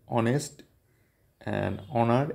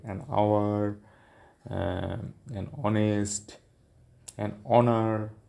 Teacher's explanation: H is not pronounced. Here honest and honor, H is not pronounced